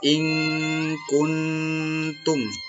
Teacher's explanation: maka ini dibaca ikhfa namanya, ya. Atau berdengung juga.